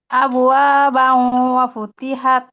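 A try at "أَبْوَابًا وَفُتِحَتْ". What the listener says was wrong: আবওয়া বাউ, একটু গুন্নাটা বেশি করে করার চেষ্টা করবেন। আবওয়া বাউ ওয়া ফুতিহাত।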